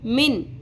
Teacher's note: یہاں پر نون کی آواز کلیئر کر کے پڑھنی ہے، میں کر کے نہیں پڑھنی